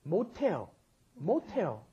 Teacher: Because that S at the bottom, when pushed up against followed by an H, turns it into the aspirated sound